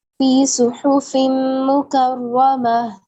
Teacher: فی صحف ادغام ہو رہا ہے 2 کسرتین کا میم میں، اور ادغام ہم ملا رہے ہیں.